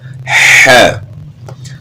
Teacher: حا کا گلے کے درمیان سے ہے